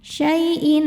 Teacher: Selanjutnya ada hukum idgham bighunah karena ada tanwin kasrah menghadapi huruf nun. Cara bacanya tanwinnya dileburkan ke nun. Masuk syaiin disertai dengungan tahan ya syaiin. Dan untuk idgham ghunah yang huruf nun ini termasuk idgam idgham ghunah yang kamil.